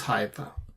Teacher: You should draw another line after He, and that He and this Qamats becomes an open syllable, and then Yod with a Shva, the vocal shva becomes another syllable, and then so there are three syllables, Hayata.